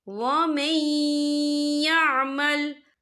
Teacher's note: نون ساکن کے بعد جو ہے یا آ رہا ہے، اور یا جو ہے حروف یرملون میں سے ہے، تو یہاں پر ادغام ہوگا، تو ہم اسے تھوڑا سا غنّے کے ساتھ پڑھیں گے۔